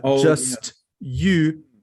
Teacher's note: you get the sh because the sh is unvoiced just like the T